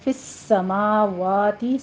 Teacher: سین کے اوپر تشدید ادا کیجیے، سختی سے پڑھنا ہے اس کو